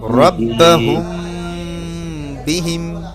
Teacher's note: এক আলিফ পরিমাণ গুন্না করে পড়তে হবে